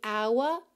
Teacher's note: Mas a palavra hour é uma exceção, tá? Que a gente tem realmente o h mudo.